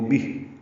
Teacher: بہ ہا ساکن پہ ہمس ہوگا